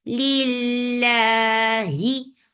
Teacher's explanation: Lil, and then it is long and 2 counts long, and this is light. Lafz jilala is light because there is kasra before it. Lillahi for kasra, give e sound.